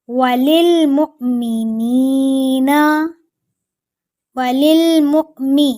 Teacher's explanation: حمزہ کے اوپر سکون ہے تو جھٹکا لگا کے پڑھیں گے، پھر نون کو ایک الف کے برابر لمبا کریں گے، لیکن جو آخر والا نون ہے نون زبر نہ، اس کے پاس کوئی بھی وجہ نہیں ہے لمبا کرنے کی تو اس کو آپ نے جلدی پڑھنا ہے۔